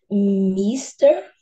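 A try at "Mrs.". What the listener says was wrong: Se fosse singular para homem, é Mister, com som de T. Mister. Esse aí você vai falar sem o T, mas vai falar como se fosse plural. Missers. Missers. E o som do S no final. Missers. O segundo, Missers.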